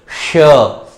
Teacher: जिह्वा जो है मसूड़े से टच हो रही है, हवा वहां से टकराकर सीटी की तरह बाहर निकल रही है। श, देखिए श, आप आकृति बनाने की कोशिश करेंगे, अगर शुद्ध उच्चारण करेंगे तो आपको आकृति का अपने आप पता चल जाएगा कि श का उच्चारण करते समय जिह्वा जो है मसूड़ों को दोनों ओर से स्पर्श करने का प्रयास करती है।